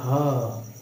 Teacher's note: जब आप ह का उच्चारण करेंगे तो ये उच्चारण कहाँ से होगा, आपका काक से होगा, यानी काकू से होगा। ये जो आपका मुख है, मुख के कंठ के ठीक ऊपर तालू के पीछे जो भाग है, ये इसे क्या कहते हैं, इसे हम कहते हैं काक या काकू। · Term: काकल वर्ण